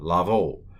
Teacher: It's a holem, a long O, piggybacking on a vav, lavo.